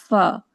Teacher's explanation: ऊपर के दांतों का किनारा नीचे के होठों के अंदरूनी यानी गीले सतह पर स्लाइड करता हुआ लगेगा